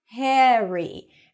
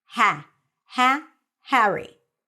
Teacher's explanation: the word Harry or the name Harry is pronounced a little bit with an e sound hariry and it's not Harry in British English it's Harry I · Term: American pronunciation